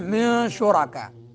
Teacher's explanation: نون ساکن، اس کے بعد حروف اخفا میں سے شین آ رہا ہے تو نون کو چھپائیں گے ناک میں، اس کو اخفا کہتے ہیں۔